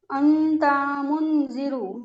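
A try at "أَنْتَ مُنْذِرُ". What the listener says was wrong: इख्फा एक अलिफ, आपने बताया ना इख्फा की मिकदार एक अलिफ है, तो इख्फा को एक अलिफ खींचिए। अंता, इस तरह से अंता मुनजिरु।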